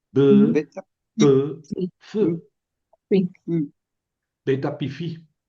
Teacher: Beta pifi, las que se producen con los labios. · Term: Labiales